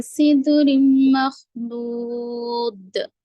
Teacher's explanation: تنوین کے بعد میم ہے تو ادغام مع الغنہ، غننے کے ساتھ پڑھیں گے